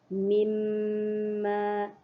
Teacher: ada mim syaddah. Jadi kena baca dengung sedikit.